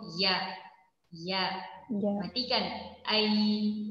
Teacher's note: Keluar dari pada pertengahan lidah bertemu dengan pertengahan langit atas